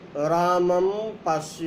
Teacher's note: अनुस्वार का उच्चारण स्थान नासिकानुस्वारस्य के साथ साथ कंठ भी है, क्योंकि अनुस्वार का आश्रय स्थल आकार है और इसका उच्चारण स्थान कंठ है।